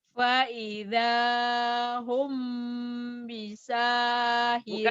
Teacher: Wa hum bunyi M tapi bindeng. Kayak bilang ember tapi bindeng ember.